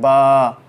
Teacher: मीम मीम, देखें होंठों का खुश्क हिस्सा आपस में मिल गया, मीम। और बा के वक्त होंठों का तर हिस्सा आपस में मिलता है